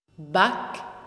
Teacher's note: The syllable back, back, slow motion playback reveals four structural stages. The vortex jet of the initial bilabial plosive b appears first, somewhat faintly, changing into a round form as a new surge of air appears. Next to appear is a brief transition, green, followed by the characteristic round flow pattern of the vowel a, yellow outline.